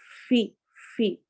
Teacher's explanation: جو اوپر والے دانت ہیں وہ نیچے والے ہونٹ کے گیلے حصے سے لگتے ہیں ، اس سے یہ فا واو کی ساؤنڈ سے بچ جاتا